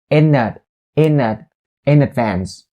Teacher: phrase is about the connection between the word in and advance in ends with a consonant n sound and advance starts with a vowel a sound that's why you can link it here